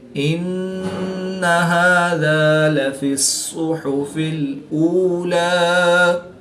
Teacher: صاد حروف مستعلیہ میں سے ہے تو اس کو پورا یعنی موٹا پڑھیں گے۔